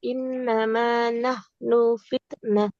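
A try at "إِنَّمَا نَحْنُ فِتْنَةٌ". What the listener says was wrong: Nunnya jangan panjang. Innama nahnu fitnatun fala takfur.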